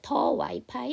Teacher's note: 이 W가 반모음이기 때문에 여기서는 D로 읽으시는 게 아니라 더 와이파이 이렇게 읽어주셔야 됩니다